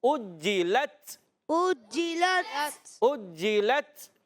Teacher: اجلت حمزہ کو خوب ظاہر کریں گے، یہ الف نہیں حمزہ ہے، حمزہ پر پیش ہے. جی مشدد ذرا رک کر ادا کریں گے.